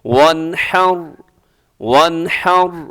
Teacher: نون ساکن کے بعد ہا، یہاں اظہار ہوگا، غنہ نہیں ہوگا، تیزی سے پڑھیے گا۔